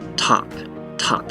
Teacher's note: at the beginning of words we aspirate then we add like a puff of air